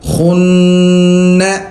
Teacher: نون پر جو ہے وہ غنہ بھی کریں گے، ناک میں آواز پیدا کریں گے